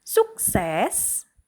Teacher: Suksesnya itu kan huruf besar tuh berarti kita bacanya nadanya tinggi. Sukses dan pelan ya. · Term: penekanan pada kata-kata penting